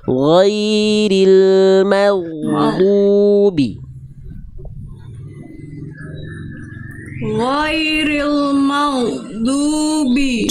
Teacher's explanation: di huruf ghain sukun Bunda bagus gak memantul, tapi dia harus mengalir. Jangan jangan terhenti.